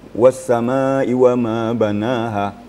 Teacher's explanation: Ma-nya panjangnya 2,5 alif. Kerana dia adalah mad wajib muttasil.